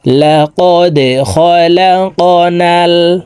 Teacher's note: লাকাদ খালাকনাল, দাল কলকলার হরফ নিচের দিকে ধাবিত করে ধাক্কা দিয়ে উচ্চারণ করব। এখানে কফ কলকলার হরফ উপরের দিকে ধাবিত করে ধাক্কা দিয়ে উচ্চারণ করতে হবে।